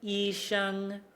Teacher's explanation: It'll be relative to our comfortable speaking voice. Usually the first tone will be somewhere up, kind of like higher pitch point of the register